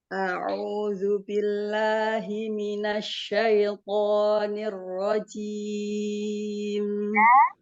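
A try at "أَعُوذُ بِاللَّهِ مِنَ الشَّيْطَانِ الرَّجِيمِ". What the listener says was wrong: Jangan diseret A sama Ain, Hamzah dulu, baru Ain. Ketika Ain, di dhamma sempurna. A'u. Jadi jangan a'udzu.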